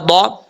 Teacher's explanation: ضاد زبر ضا، ضاد حروف مصالحہ میں سے ہے، اس کا مخرج ہے زبان کی لیفٹ سائڈ یا دونوں سائڈیں اوپر والے داڑھوں کی مسوڑھوں سے لگیں تو ضاد پڑھا جاتا ہے